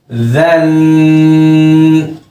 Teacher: ज़बान की नोक को ऊपर वाले सामने के जो दो दांत हैं उससे मिला लें और इसको नरमी से पढ़ें। ज़न। बिल्कुल इसी मखरज से ज़बान के सहारे से ही इसको मोटा करके पढ़ें, होंठ गोल होने ना पाए। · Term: ज़ाल